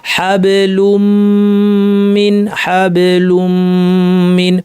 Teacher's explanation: এটা সহ গুন্না সহ, এটা হলো নাম হলো গুন্না সহ ইদগাম, কারণ এখানে আসলে লুন ছিল তানউইন, সেটাকে আমরা মিমে পরিণত করেছি, দুইটা মিমকে একসাথ করে একটা মিম বানিয়ে তাসদিদ যুক্ত একটা মিম হিসেবে উচ্চারণ করেছি